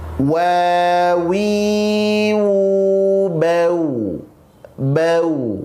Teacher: waw bukan huruf tebal, dia huruf tipis. Maka penyebutannya mesti pada posisi senyum. Maka makhrajnya monyong senyum, wa, wa, wi, wu, langsung. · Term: huruf wawu